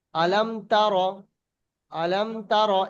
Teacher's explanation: যেমন আলাম তার, আলাম তার, এখানে গুণনা হচ্ছে? গুণনা হচ্ছে না, বিনা গুণনা স্পষ্ট করে পড়তে হচ্ছে। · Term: ইজহারের স্বাভাবিক